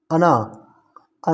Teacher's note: यह मूर्धन्य है स्पर्श है सघोष है नासिक और अल्प प्राण है